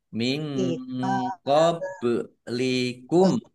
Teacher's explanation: nun sukun bertemu dengan huruf qaf, bacaan ikhfa, dibaca samar-samar